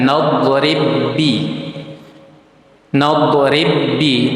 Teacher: Cara membaca dari idgham mutamatilain itu sama seperti kita membaca huruf ketika ada tasydid ditekan.